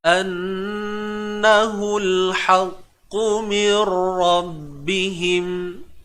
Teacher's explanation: Nun bersabdu, kena dengung tuan-tuan puan-puan, wajibul gunnah.